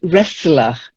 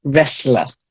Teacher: It's a silent T, wrestler.